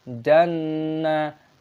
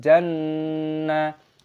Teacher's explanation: Nun tasdid hukumnya dibaca gunnah, didengungkan.